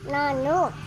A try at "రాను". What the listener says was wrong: నాను కాదు, రాను. రాను.